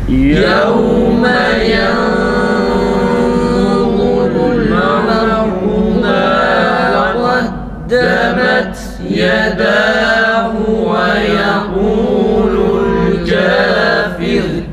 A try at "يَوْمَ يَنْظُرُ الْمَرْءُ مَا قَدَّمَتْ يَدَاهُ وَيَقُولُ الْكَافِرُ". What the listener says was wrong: Za harfinde ihfayı şey yapalım. Kalın okuyalım arkadaşlar. Yanzurul tekrar okuyalım.